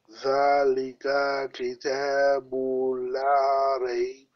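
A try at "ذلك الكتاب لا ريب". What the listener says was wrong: Zalikal. There's a scone on Lam. There is a sukoon on lam, so I have to join this lam with previous ka fataka. It will become kal. Kal. Zalikal kitabu la raib. Kal.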